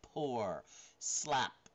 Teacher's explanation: Now, here's a voiceless bilabial stop. The P here, pour, slap.